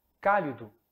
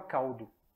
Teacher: A vogal pós-tônica, que é o I, ela cai, que dá em português a palavra caldo. O U vira O, né?